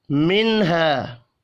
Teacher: نون ساکن کے بعد ہا ہے، اظہار حلقی ہوگا، غنہ نہیں ہوگا، الف مدہ کو 1 الف کے برابر کھینچ کر پڑھنا ہے۔